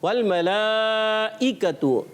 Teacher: حمزہ کی آواز آئے, عین کی آواز نہیں آئے